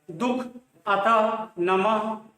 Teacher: विसर्ग का उच्चारण आधे ह के रूप में होता है और इसको देखिए ये विसर्ग के रूप में अह का उच्चारण होता है।